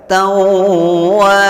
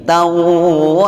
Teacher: tidak boleh dibaca tanwinnya karena sudah diganti alif atau diganti huruf mad. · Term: mad iwad